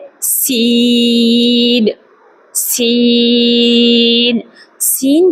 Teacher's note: سین کا مخرج بھی وہی ہے جو زا کا ہے، یعنی زبان کی نوک جو ہے، زبان کی نوک ثنایا سفلا یعنی نیچے والے سامنے والے دو دانت جو ہیں ان کے ساتھ ٹکراتے ہوئے اوپر والے دانتوں کے ساتھ بھی لگے تو سین سین ادا ہوگا۔ حرف سین سین سین کا مخرج ادا کرتے ہوئے یاد رکھیے گا کہ اس میں سیٹی کی آواز آئے